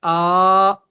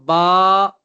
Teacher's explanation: الف مدہ وہ الف جسے کھینچ کر پڑھا جاتا ہے جب اس سے پہلے زبر ہو، اسے الف مدہ کہا جاتا ہے۔